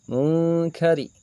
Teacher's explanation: Ini adalah ro tarqiq. Karena ro yang berharokat kasrah dibacanya harus tarqiq atau tipis.